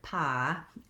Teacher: So in the South, they might have a tendency to say more like pa instead of pie. They may draw it out and hold it long, but they don't always have that slide between the two sounds.